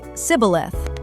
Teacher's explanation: The Ephraimite accent physically couldn't make the sh sound.